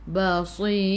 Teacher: Sebelum huruf ra bila kita berhenti ada huruf ya kena baca dengan nipis tarqiq